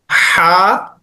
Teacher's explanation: Next ह without dot letter है। गले के दरमियान से पढ़ा जाता है